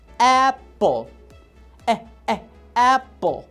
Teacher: La A le estoy dando el sonido como la E. ¿Por qué? Porque normalmente cuando está la letra A, al principio o en medio de una palabra, el sonido que le vas a dar a la letra va a ser E.